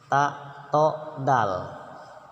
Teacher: sama-sama keluarnya dari ujung lidah bertemu dengan pangkal gigi yang atas. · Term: satu makhraj